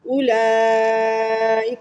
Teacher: اولئک کو 2.5 الف کی مقدار کھینچا کیونکہ یہ مد متصل ہے